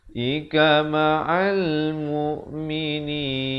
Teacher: alif lam qamariyah, lamnya dibunyikan dengan jelas